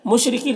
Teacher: را کے نیچے زیر را کو باریک پڑھیں گے